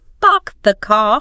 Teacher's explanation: But many other accents, standard British English, RP, Australian, New Zealand, South African, even some parts of the US like Boston or the South are non-rodic. They tend to drop or soften that R sound after a vowel.